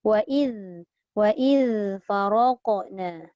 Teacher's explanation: Wa idh dia ada rokhawah zal ni.